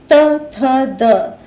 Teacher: इन वर्णों को बोलने में आपकी जीभ दांतों के पिछले भाग का स्पर्श करती है, इसलिए ये वर्ण दंत कहलाते हैं।